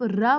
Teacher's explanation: तो र बोलने में आपकी जुबान क्या होती है? पूरी लुढ़कती है। इसीलिए उसको लुणित व्यंजन बोला जाता है।